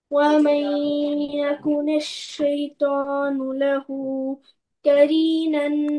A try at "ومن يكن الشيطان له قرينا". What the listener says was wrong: नहीं नहीं, और कॉफ कॉफ बोल्ड पढ़े।